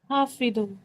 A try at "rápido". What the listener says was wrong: Rápido. Pa. No, you're saying fa, I am saying pa. Rápido. Papa wala pa. Rápido.